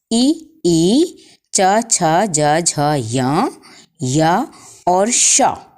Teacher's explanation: इचु यशानाम तालुहु, ई च छ ज झ य और श का उच्चारण स्थान हमारे मुख में तालु कहलाता है। तालु से हम इन वर्णों को उच्चारित करते हैं।